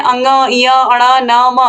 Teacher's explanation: नासिक यानी कि नाक, जब इनको हम बोलते हैं अंग, य, अड़ा, न, म तो ये हमारे नाक से ध्वनि आती है। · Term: अनुनासिक वर्ण